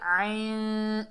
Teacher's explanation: عین کو حلق کے درمیان سے ادا کریں گے